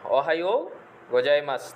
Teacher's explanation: জাপানি ভাষায় যেখানে শব্দ শেষে মাসু দেখবেন সেটার উচ্চারণ হবে মাস